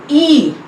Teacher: Then E, front vowel just below half open के नीचे, and unrounded vowel. It is front unrounded vowel just below half open.